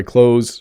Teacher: the th sound is not pronounced